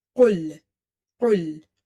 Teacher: it's heavy and it's pronounced from the root or the back of your tongue when it touches the soft palate or the soft part of your upper palate. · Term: full mouth letter